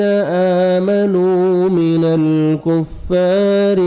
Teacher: کاف کو باریک پڑھ کے آپ نے فا شد کے ساتھ ملانا ہے اور فا کو 1 سیکنڈ کھینچنا ہے